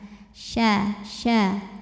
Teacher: Tengah lidah menyentuh langit-langit di atasnya